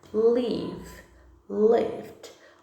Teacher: A gente não pronuncia o E, a gente só vai pronunciar o D.